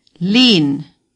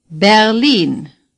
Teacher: the stress is on the long I.